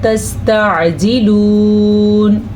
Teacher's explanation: اگر آپ بہت کلیئر عین نہیں نکال سکتے، آپ کو عین کو ٹچ کرنا ضروری ہے، بالکل اس کو الف یا حمزہ بنا دینا ٹھیک نہیں ہے